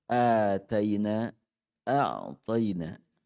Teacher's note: ta dengan ta, satu makhraj. Yaitu ujung lidah bersentuhan dengan pangkal gigi atas.